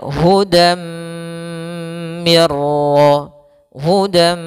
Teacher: cara membacanya masukkan tanwin ke huruf mim dan ditahan maka hudam Mir hudam tahan m hilang nunnya masuk ke Mim